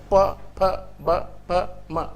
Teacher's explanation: कहीं-कहीं बैलेबियल भी बोलते हैं तो ओष्ठय जैसे प दोनों ओठ है यही ब्लॉक होता है प ब प म पूरा ओठ का है ना इसलिए ओष्ठय